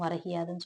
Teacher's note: அது முழுமையாக ஒரு மாத்திரை அளவில் ஒலிக்காமல் அரை மாத்திரை அளவாக குறைந்து ஒலிக்கிறது இவ்வாறு தன் மாத்திரை அளவில் குறுகி ஒளிச்சதால குற்றிய இழுகரம்னு சொல்றாங்க அரை மாத்திரை